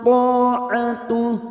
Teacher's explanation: huruf ta isti'la, huruf tebal, fathah diikuti alif, 2 harakat